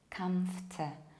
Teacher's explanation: When you take a look at this word, you have to imagine that we get rid of middle OR and we quickly go from F to T, ft, ft, and then you pronounce A like I, comft.